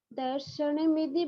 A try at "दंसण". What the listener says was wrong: हाँ, चतुर्थ चरण में दंसण है ना। जहाँ तक मुझे सुनाई दिया शायद आपने दर्शन के आसपास कुछ शब्द बोला। दर्शन नहीं, दंसण। उसमें दंसण जी अनुस्वार है।